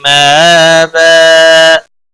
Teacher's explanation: ما الف مدہ ہے کھڑی زبر ہے. حمزہ کے اوپر ایک الف کے برابر کھینچ کر پڑھیں گے. وقف کی صورت میں تنوین کو بدل کر ایک زبر کے ساتھ پڑھیں گے.